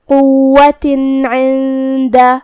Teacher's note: کلمت عند میں یہاں حرف العین ہے. عین کی ادائیگی حلق کے درمیان والے حصے سے ہے تو ہم عین کو وہیں سے پڑھیں گے اور اسے ظاہر کریں گے. · ابہار کا معنی ہے ظاہر کرنا اور جو کہ تنوین کی اصلیت نون ساکن ہوتی ہے تو ہم یہاں تنوین ظاہر کریں گے اور اسے نون ساکن پڑھیں گے اور بغیر غنہ سے حکم کو ادا کریں گے